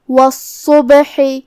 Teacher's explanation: یہاں ہم صاد کو تفخیم سے مطلب بھاری آواز میں ادا کریں گے اور اسے 2 حرف کی مقدار میں پڑھیں گے کیونکہ اس پہ تشدید ہے۔ · پھر حرف البا ہے اور اس پہ جزم ہے، یہاں با کا حکم ہے قلقلہ تو ہم با کو ہلاتے ہوئے یہ کلمہ کو ادا کریں گے۔ آخر میں حرف الحا کو حلق کے درمیان والے حصے سے ادا کریں گے اور جو کہ اس کے نیچے زیر ہے تو ہمیں ہا کو زیر سے پڑھنا ہے۔